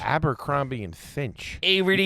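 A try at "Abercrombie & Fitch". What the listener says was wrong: It's a T, not an N, dude.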